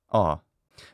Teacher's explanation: the true phonetic realization is a little bit of a diphthong